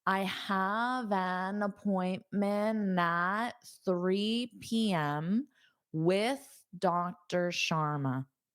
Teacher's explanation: when I combine appointment with my next word, I'm not going to pronounce that T because it forces me to take a pause.